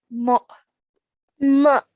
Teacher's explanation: don't be confused and make the sound of an ayn, but rather it should be a soft jerk sound for the hamza sakin.